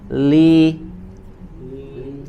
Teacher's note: Jadi tidak dibaca tebal, jangan li, jangan diangkat bagian pertengahan sampai ke pangkal lidahnya atau tidak digemakan